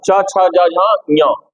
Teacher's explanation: इचु यशाना इ या चू माने चुने होता है च वर्ग। च छ ज झ ञ इसका उच्चारण स्थान क्या है? तालु है